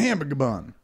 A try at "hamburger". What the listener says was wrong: Hamburger. There's too many M's in your hamburger. You said something with a lot of M's in it last